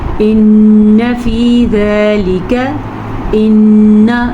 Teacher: نون کا غنہ ادا کریں، شد کے ساتھ ادا کریں